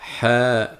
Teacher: rappelez-vous que la lettre ha sort du milieu de la gorge